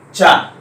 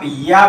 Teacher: तो या का भी तालु है, दोनों का उच्चारण स्थान तो सेम है, परंतु ये चा बोलेंगे तो ज्यादा स्पर्श होता है, पर जब या बोलेंगे तो कम स्पर्श होता है। अंत ये किसका कारण है, ईसत स्पृष्ट, कहता थोड़ा स्पर्श, ज्यादा स्पर्श ना हो।